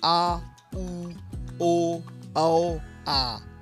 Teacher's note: जिन स्वरों के उच्चारण में जिह्वा का पिछला भाग सक्रिय रहता है उन्हें पश्च स्वर कहते हैं।